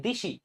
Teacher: এ ধ্বনিটা কিন্তু একেবারে পুরাপুরি চেঞ্জ হয়ে ই ধ্বনি হয়ে যাচ্ছে এই ব্যাপারটা হলো স্বরসংগতি কারণ দেখো সরাগমের সাথে মেলানো যাবে না কারণ এখানে নতুন করে কোন এক জায়গায় কোন ধ্বনি ছিল না ওইখানে স্বরধ্বনি চলে আসে নাই এখানে একটা স্বরধ্বনি ছিল যেটা চেঞ্জ হয়ে গিয়েছে।